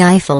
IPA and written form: ˈaɪfəl (Eiffel)